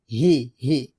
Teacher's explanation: এই হারটা আমরা হলকের শুরু থেকে পাতলা করে উচ্চারণ করব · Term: হাজের হি